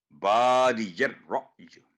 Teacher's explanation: را کو پر کر کے بادی یر رأی